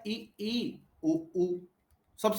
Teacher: संवृत के अंदर आ जाता है इ उ कम मुंह खुलता है